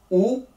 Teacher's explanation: la boca bien cerrada y permanece redonda